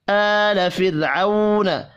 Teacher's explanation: را ساکن سے پچھلے حرف کے نیچے زیر ہے، را کو باریک پڑھنا ہے۔ عو واو لین ہے۔